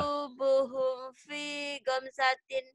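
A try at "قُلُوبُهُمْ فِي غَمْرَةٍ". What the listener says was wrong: Gomsatin. Bukan gomsatin, ini gomrotin ya. Gomrot. Gomrotin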